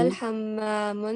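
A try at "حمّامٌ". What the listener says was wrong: नहीं ये तो नहीं है ना। जब अलिफ लाम और तनवीन एक वर्ड पर आ सकते हैं? जी नहीं आते।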